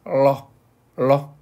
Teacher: 혀가 구부러져서 천장에 닿죠?